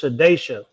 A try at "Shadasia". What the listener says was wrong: Some reason y'all be over pronouncing the vowels. Y'all be adding. Vowels. Shadasia.